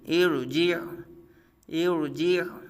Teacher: ارجعی، sorry ارجع، ارجع، اب یہاں را ساکن سے پہلے جو حمزہ کے نیچے زیر ہے یہ عارضی زیر ہے، حمزہ کے نیچے جو یہ زیر ہے را ساکن سے پہلے عارضی زیر ہے، اس لیے یہ را کو پر پڑھا جا رہا ہے۔ ہم نے را کو پر پڑھنے کا قاعدہ پڑھا تھا، را ساکن سے پہلے عارضی حرکت آ جائے، عارضی حرکت ہو تو را کو پر پڑھیں گے۔